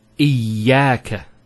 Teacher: Notice the ya gets a double vowel because of the shadda there. Iyaka. It's not iyaka, iyaka.